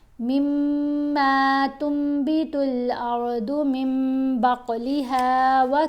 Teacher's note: پھر تن بھی تو نہیں پڑھیں گے، تم بھی تو، قلب ہے نا، نون ساکن ہے، اس کے بعد با ہے، تو ہم نے نون کی آواز کو میم کی آواز سے بدل کر پڑھنا ہے